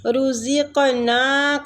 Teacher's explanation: قاف کو قلقلہ بھی کریں گے، قلقلہ دیں گے اس کو ، اور ساتھ میں یہ مستعلیہ حروف بھی ہے، یہ آپ